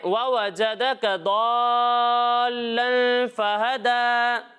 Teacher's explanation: تو یہاں پر بھی ہم تنوین میں غنہ کر کے پڑھیں گے